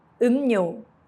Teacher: When 미음 meets 리을, the 리을 changes to 니은.